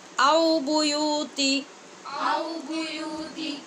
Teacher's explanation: ان کی تا کے خاص طور پہ خیال رکھنا ہے کہ بیوتی نہیں پڑھا جائے، تا کو بالکل زیر سے زیادہ لمبا نہیں کریں گے